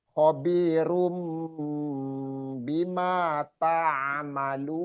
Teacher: Merubah run menjadi rum, merubah huruf nunnya ya runnya menjadi mim. Jadi itu namanya iqlab.